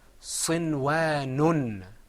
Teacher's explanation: when I have a noon and I have on top of it two dhammas instead of just one, I'm going to add an extra noon sound. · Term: tanween